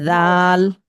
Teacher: এক আলিফ টান দিয়ে বলতে হবে জাল